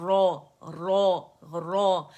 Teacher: तो जब इसे हम रा नहीं पढ़ेंगे, हम इसे रॉ पढ़ेंगे, क्योंकि अलिफ जब आता है फतह के साथ और रॉ पर है तो ये मोटा हो गया और पहले दर्जे की तफ़ख़ीम हो गई